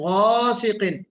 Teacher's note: غین میں بھی آواز کو پر کرنا ہے